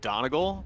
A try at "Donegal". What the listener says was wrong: Donegal. Get your emphasis on the right syllable.